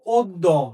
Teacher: অ এর উচ্চারণ সংবৃত। সংবৃত হয় যখন তুমি বলেছ তখন আর কি ও বা ওকারের মত, ও বা ওকারের মত।